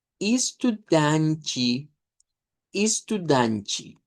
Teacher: Nótese la e que se pronuncia como i. Luego la a nasalizada que se vuelve una a centralizada nasalizada y la te e que suena como chiro.